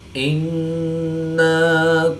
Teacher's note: نون مشدد میں ہمیشہ غنہ ہوتا ہے تو یہاں پر ہم غنہ آنی کر کے پڑھیں گے۔